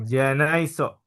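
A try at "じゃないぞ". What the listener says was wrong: Tapi ada petiknya menjadi Z.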